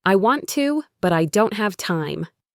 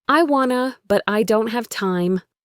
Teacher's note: Here the T in don't can be dropped.